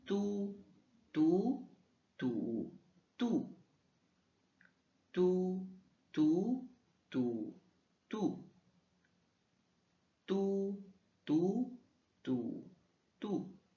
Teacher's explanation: on le prononce entre un D et un T mais sans une aspiration, donc pas de souffle. Donc un astuce ce serait de mettre ta main devant ta bouche et il ne doit presque ou pas d'y avoir d'air.